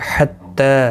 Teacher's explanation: تا کے اوپر کھڑی زبر ہے، ایک الف کی مقدار کے برابر کھینچ کر پڑھیں گے